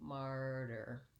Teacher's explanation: i still have my long stressed syllable on mar and my short unstressed syllable on the der